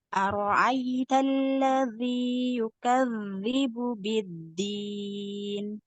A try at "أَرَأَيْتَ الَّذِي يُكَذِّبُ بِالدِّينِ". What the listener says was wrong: Nah, tipis ya. Jadi hati-hati jangan naik pangkal lidah ya.